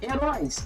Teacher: Róis é minha sílaba tônica e é a última sílaba. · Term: oxítona